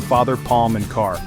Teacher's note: is an open back unrounded vowel heard in father palm and car. Your tongue is low and back mouth open.